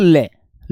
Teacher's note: और बेटा ल बोलकर देखो ल दांत से बोला जा रहा है। दंतीय वर्ण है